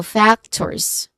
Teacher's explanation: The first syllable fact is the stressed syllable here.